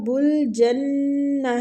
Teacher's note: نون مشددہ غنہ کریں گے، تا کی آواز کو ہم ہا میں تبدیل کر دیں گے ساکن